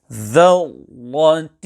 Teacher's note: When reciting the word ذَرَّةٍ, the Ra mushaddada will be pronounced full mouth, or in other words, both Ra in the Ra mushaddada will be pronounced full mouth. However, care should be taken to ensure that the Dal before the Ra mushaddada is not pronounced full mouth and changed into Va.